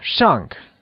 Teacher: carries the falling tone also known as the fourth tone